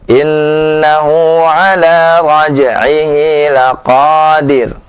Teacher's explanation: Dir tidak ditebalkan karena dia sukun dan sebelumnya adalah kasrah